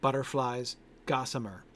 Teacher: we get the stress on the first syllable in both of those three syllable words